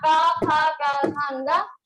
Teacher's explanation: ये कंठ से बोला जा रहा है, कंठ को स्पर्श करते हुए आ रहा है।